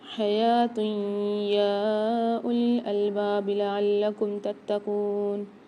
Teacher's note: یہاں غنہ کے ساتھ ادغام کر کے پڑھیں گے، اور یا کو کھینچ کر بھی پڑھیں گے 4 سے 5 الف کی مقدار